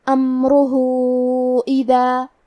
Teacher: امرہ اذا، کلمت اذا کے آخری میں الف پہ مد کا علامہ ہے، یہ مد جائز منفصل ہے تو ہم اپنی آواز 2 سے 4 مد کے برابر لمبی کریں گے۔ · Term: مد صلہ کبریٰ